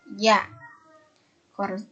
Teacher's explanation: Tengah lidah bertemu dengan langit-langit keras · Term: konsonan mediopalatal